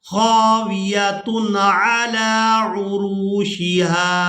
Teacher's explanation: اب تنوین کے بعد عین جو ہے یہ حروف حلقی میں سے ہے، تو یہاں پر ہم تنوین کی آواز کو ناک میں چھپا کر ادا نہیں کریں گے، یعنی اخفا نہیں کیا جائے گا۔